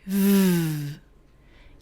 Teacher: When I say v, you can hear air coming out and there's a vibration, which means that my voice is on. We can also call these types of sounds voiceless and voiced.